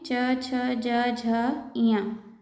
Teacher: ये है तालव्य व्यंजन कहते हैं इन्हें। ये तालु से बोले जाते हैं।